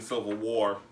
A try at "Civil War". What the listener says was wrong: It sounded like you said silver.